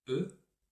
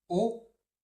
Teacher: dans le son E, le son précédent, la langue touche les dents, E, et quand on dit O, la langue ne touche pas les dents